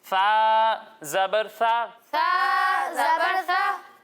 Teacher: जब हम सा की अदायगी करेंगे तो इसमें सीटी की आवाज़ नहीं आएगी